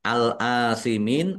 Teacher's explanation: Tetapi karena di akhir kata atau karena bertemu dengan huruf terakhir yang dibaca waqaf yang dibaca sukun karena waqaf maka menjadi mad arid lisukun. Mad arid lisukun dibaca panjang boleh 6 atau dua harakat. · Alif lam qamariah ditandai lamnya dibaca sukun. Kemudian alif fathah berdiri mad thobi'i panjang dua harakat. Mim kasrah ya sukun mad thobi'i.